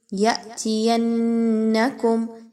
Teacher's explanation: فإما، میم مشدد کا غنہ ہوگا، میم الف زبر ما، الف مدہ ہے، 1 سے 2 الف کے برابر اس کی ادائیگی ہوگی۔ یأتینکم، یا یہاں پر جھٹکا دیجئے حمزہ ساکن کا، یا اور نون کو آپس میں ملاتے ہوئے نون مشدد کا غنہ ہوگا۔